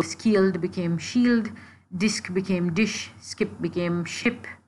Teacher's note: in the 6th century when SK sound words shifted to an SH sound.